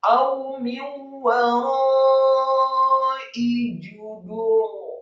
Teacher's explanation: Kemudian ra-nya dibaca tafkhim, dibaca tebal dan isti'la, tidak dibaca tipis. Huruf ra yang sukun dalam hal ini dibaca tebal karena sebelumnya ada huruf dal yang marfu' atau dhammah.